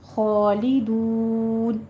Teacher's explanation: دون میں خالدون، یہاں پہ مد عارض وقفی کرنی ہے، یہاں پہ 6 کاؤنٹ کرنا ہے